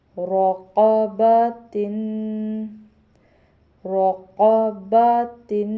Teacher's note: با کو موٹا نہیں کرنا، صرف را اور قاف کو موٹا کرنا ہے